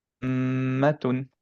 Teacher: আমাদের ঠোঁটটা ক্লোজ থাকবে, রাইট? লিপস দিয়ে কোনো অ্যাকচুয়ালি কোনো এয়ার ফ্লো হবে না, পুরা সাউন্ডটা রেজোনেট হবে নেজল কেবল। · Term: মিম গুণা